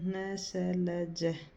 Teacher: वर्तस्य व्यंजन न स ल ज। इनका उच्चारण करते समय जीभ दांतों ऊपर के पास मसूड़े को स्पर्श करती है।